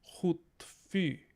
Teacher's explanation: we would carry the rounding of that u forward to the rest of the vowels in that word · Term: rounding harmony